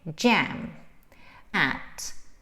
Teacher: and jam is with an open a with tension right it's an open mouth